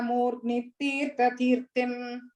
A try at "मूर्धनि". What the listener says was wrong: So third line la Sukruti, long E, Sukruti Parinijya, and fourth line la Murdhani, full dha.